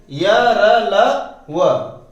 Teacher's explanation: यह सघोष और अल्प प्राण भी कहे जाते हैं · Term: अंतस्थ व्यंजन